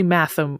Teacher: it's probably matham with a voiceless th